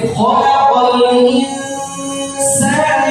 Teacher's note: Nun mati bertemu dengan sin, ada ikhfa di situ.